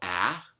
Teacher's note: the low front unrounded vowel of English, of American English. And you can see there's a first peak here.